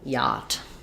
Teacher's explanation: word yacht so yacht is kind of odd with its spelling the ch is silent we have the ah sound so we have first syllable stress